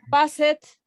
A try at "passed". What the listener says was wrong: Recuerden, no vamos a decir passed. No se dice passed. Passed, como T. Recuerden, la ED no se dice called, no se dice passed. Called, passed.